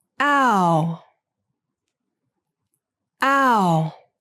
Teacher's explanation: the sound that requires the lips moving from an unrounded to a rounded position